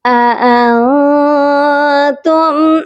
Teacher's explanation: یہاں پر اپنی آواز کو ناک میں چھپا کر پڑھا جائے گا اور اس نون ساکن پر بھی اخفا کیا جائے گا، آواز کو ناک میں چھپائیں گے.